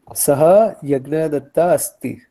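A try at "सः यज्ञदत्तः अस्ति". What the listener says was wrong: Okay, very good.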